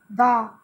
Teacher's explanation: दा बोलते समय जो आपकी जीभ है वो दांत को लगेगी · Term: दंत स्थान